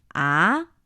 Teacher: the second tone is supposed to be a three five. Ah, it's a combination of the different levels.